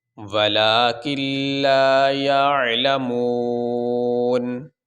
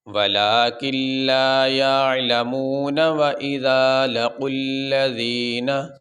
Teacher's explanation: اب ہم نے نون کو ساکن پڑھا، نون کے اوپر زبر نہیں پڑھا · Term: نون ساکن